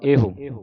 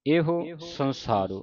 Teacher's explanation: ਇਹੋ ਪੜਨਾ ਲੰਮਾ ਨਹੀਂ ਕਰਨਾ ਔਂਕੜ ਦੀ ਆਵਾਜ਼ ਕੱਢਣੀ